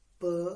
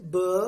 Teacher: In P, there is less vibration. But if we say B, in B, there is more vibration.